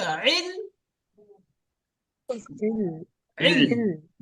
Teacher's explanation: ইল বললে হামজা বার হয়ে যাবে আর গলায় একটু চাপ দিলে আইনটা বার হয়ে যাবে